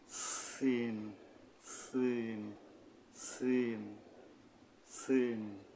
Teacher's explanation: জিহ্বার আগা সামনের নিচের দুই দাঁতের আগাত থেকে শীষসহ পাতলা ভাবে আদায় হবে